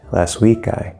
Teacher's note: We have this intonation, rising intonation from the comma.